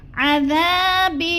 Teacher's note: ذال کو ہم نے نرم کر کے پڑھنا ہے کیونکہ یہ نرم حروف میں سے ہے، سیٹی کی آواز بالکل نہیں آنی چاہیے۔